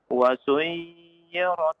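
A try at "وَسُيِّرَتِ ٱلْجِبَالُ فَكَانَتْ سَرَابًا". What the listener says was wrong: Jangan dipanjangkan, tasdid saja. Wa suyyiratil jibalu fakanat saraba.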